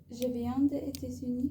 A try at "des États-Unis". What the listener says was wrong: Alors, t'as toujours du mal sur le des États-Unis. On n'entend pas des États-Unis. Des États-Unis.